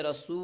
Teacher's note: واو ساکن سے پہلے پیش ہے واو مدہ اس لیے واو مدہ کو ایک الف کے برابر کھینچ کر پڑھیں گے